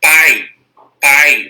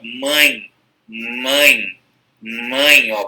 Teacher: os ditongos nasais com aqueles que parte do ar sai pelo nariz